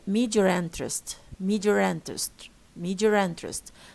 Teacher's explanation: the people pronouncing non-rhotic accents, they insert an R, okay, to link between these two vowels.